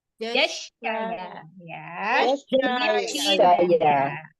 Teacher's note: Tengah lidah bertemu langit-langit atas. Tengah lidah bertemu langit-langit atas.